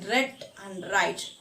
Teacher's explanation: soft palate is raised, so nasal passage is blocked and the articulators are brought near each other but not close enough to produce any friction. പ്രത്യേകിച്ച് ഒരു audible friction ഉള്ള അത്രയും close അല്ല, അങ്ങനെയുള്ളതാണ്. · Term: frictionless continuance